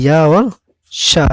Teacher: ये वाला या और शा, ये दोनों तालु से बोले जाते हैं